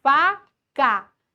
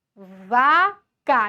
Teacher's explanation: Então, é chamado de par mínimo, porque eu troquei apenas o local. E o par mínimo em português, ele se diferencia no desvozeamento do F e no vozeamento do V. Então, a diferença na voz, no F e do V.